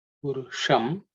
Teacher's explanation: the cerebral sha so the tip of the tongue has to point upwards.